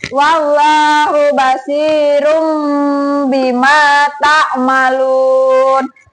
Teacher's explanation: Cara membacanya, suara N diganti sama suara M. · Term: iklab